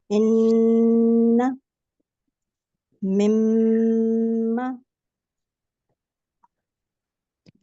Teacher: جو میم مشدد ہے اس کو ناک کا جو اوپر والا حصہ ہے وہاں سے اس کی ادائیگی ہوگی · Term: میم غنہ